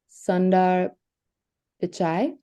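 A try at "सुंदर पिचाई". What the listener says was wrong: Perfect. But if you remember the U sound, it would be a short vowel sound.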